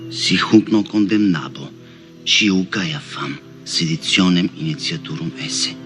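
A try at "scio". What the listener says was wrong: And when he says shio, it sounds a lot like shiu to me.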